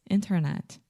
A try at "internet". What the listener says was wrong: Internet. First, most Brazilians, not all of you, but many of you have the tendency to say internet. There is no chi at the end. So the last sound, internet.